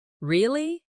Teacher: when they are surprised, their voice goes up.